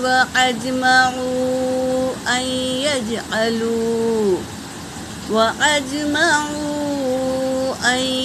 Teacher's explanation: واو حرکت، حمزہ حرکت، جیم پر سکون ہے تو پہلے والے حرف سے ملا کر پڑھیں گے۔ میم حرکت، واو ساکن سے پہلے پیش، واو مدہ اس پر مد ہے، مد منفصل، تو 3 سے 4 الف کے مقدار کھینچیں گے